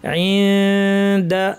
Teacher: উপর দাঁতের গোড়ায় কাছাকাছি জিব্বা নিয়ে দালের মাখরাজ, নাক থেকে গুন্না। ইনদা, দাতে টান নাই, দা র, এই জন্য দায়ের পরে র চলে আসবে।